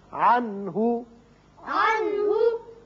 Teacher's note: یہاں نون ساکن کے بعد ہا ہے، ہا حروف حلقی میں سے ہے، لہذا یہاں اظہار حلقی ہوگا، نون پر اظہار ہوگا۔